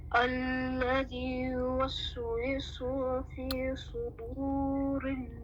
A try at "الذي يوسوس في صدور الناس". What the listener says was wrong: the scene in yuwaswisu, this one sounds like the Sad Dhamma for you. Alright? Or they sound similar. So sin is a light, Sad is heavy.